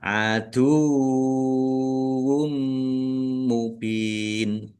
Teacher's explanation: wawunya ada tasdidnya dibaca dobel · domah tanwin bertemu dengan huruf mim, bacaan idgham bi gunnah. Masuk dengan mendengung, yaitu mendengung mim. Ditandai mimnya ada tasdidnya, ditahan biar tampak mendengung.